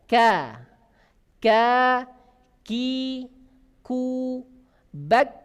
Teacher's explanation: kalau kaf pangkal lidah menyentuh langit-langit yang sejajar di atasnya yang berbentuk daging dan tulang. Maka suaranya pun akan beda.